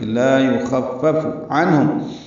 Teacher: لا الف مدہ ہے، یخفف میں خوا پر پڑھیں گے، فا سے ملائیں گے، فا کو جلدی ادا کریں گے، پھر فا کو معروف طریقے سے پڑھیں گے، لا یخفف عنہم، عین وسط حلق سے ادا ہوگا، نون ساکن پہ اظہار ہے، اظہار حلقی ہے، ہا حرف حلقی میں سے آ رہا ہے اس لیے اظہار ہے